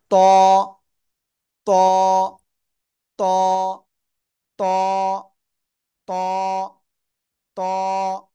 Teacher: জিহ্বার আগা, এই উপরে দুই দাঁতের গোড়ায় লাগান লাগান লাগান, লাগিয়ে মোটা আওয়াজে উচ্চারণ করতে হবে।